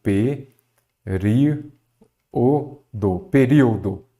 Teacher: A antepenúltima sílaba é a tônica. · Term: proparoxítona